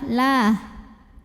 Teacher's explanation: Maka dibunyikannya lam ini adalah la. Tipis, pangkal lidah datar. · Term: tarqiq